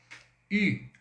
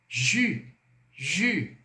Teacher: No francês, o U tem som de I e vem com um biquinho.